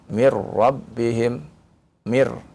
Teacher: nunnya hilang ya. Yang masuk kepada huruf ro. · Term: idgham